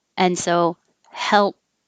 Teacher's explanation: the dark l is the middle of the tongue coming up and touching the middle of the mouth so the tip of the tongue can stay down